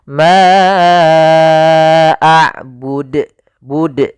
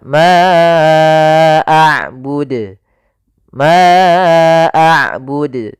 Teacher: Harusnya tidak ditambahkan hamzah.